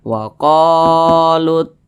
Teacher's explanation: huruf q dibaca panjang Mad Thobi'i panjangnya dua harakat atau kira-kira dua ketukan